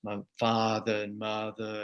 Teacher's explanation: that famous Southern accent that's also non-rhotic